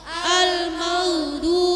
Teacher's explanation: Al-maghdubi, wai sukun bukan qulqulah, maka jangan ada pantulannya. Dhod dari antara tepi lidah kanan kiri dan gigi geraham.